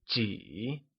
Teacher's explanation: How many or a few translates to ji, which is said using a falling, rising tone